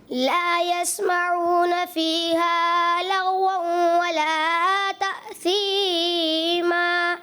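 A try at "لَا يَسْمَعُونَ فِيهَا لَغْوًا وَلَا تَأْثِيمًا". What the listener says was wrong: مد اصلی کو تھوڑا سا زیادہ کیا. 10 میں سے 9 نمبر.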